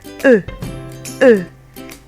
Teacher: you can imagine that you're saying A in English, but you round your lips. So you're trying to say A, but you round your lips, so it sounds like E.